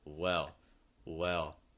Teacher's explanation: american english the placement's super low but you are raising the back that middle and the front of your tongue up